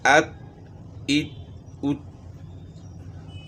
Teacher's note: تا کا مخرج کیا ہے کہ زبان کی نوک ثنایا اولیہ کی جڑ کے ساتھ لگے گی۔ اب ہم پڑھتے ہیں ات ات، تو معلوم ہوا کہ تا اپنے مخرج سے ادا ہو رہی ہے۔